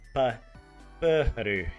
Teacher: you have to like say the puh and then a little huh sound and then ruh. And obviously, it's also difficult because the the R is a a different type of R from what we have in English.